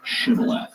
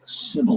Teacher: In Gilead, people would pronounce this word with a sh sound on the front of it. So, it would be pronounced chival.